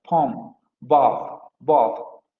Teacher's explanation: bot y palm se van a pronunciar con la posterior abierta no labializada